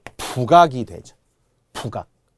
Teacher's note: 발음은 연음이 되어 북악이 되죠.